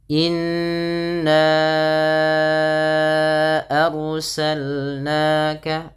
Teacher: ro-nya ditebalkan karena ada huruf ro yang sukun didahului dengan fathah, maka ro-nya menjadi ro yang tafkhim, yaitu ro yang dibaca dengan tebal. · ditahan bunyi suara n-nya, dipanjangkan 2 harakat karena ia terdapat bacaan gunnah